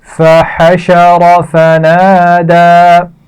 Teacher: فحشر را کو موٹا پڑھا جائے گا. فنادى دونوں کھینچ کر پڑھے جائیں گے. پہلا الف مدہ ہے اور دال پر کھڑا زبر ہے